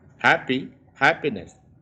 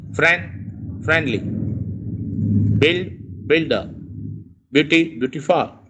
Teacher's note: You can see the stress remains on the first syllable only.